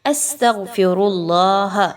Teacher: سین پر سیٹی کی آواز کو لائیں گے۔ تغفر اللہ، غین موٹا حرف ہے، تخفیم کے ساتھ پڑھا جائے گا۔